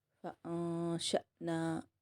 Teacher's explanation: اخفا کر کے جھٹکا دے کے نون الف زبر نا کہیں گے